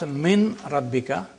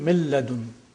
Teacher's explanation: noon is assimilated in the next word, the following letter. So you don't pronounce min rabbika, you say mir rabbika. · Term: complete assimilation